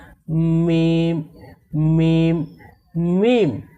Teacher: তারপরে মিম, মিম হরফকেও দুই ঠোঁট থেকে পড়তে হয়। এই মিম হরফকে দুই ঠোঁটের শুকনো অংশ থেকে পড়তে হয়